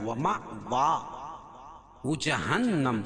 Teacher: حمزہ یہاں الف کی شکل میں لکھی ہے، اس کے اوپر جزم ہے تو وہ جھٹکا دیں گے۔